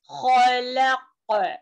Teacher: خا میں خراٹے کی آواز آنی ہے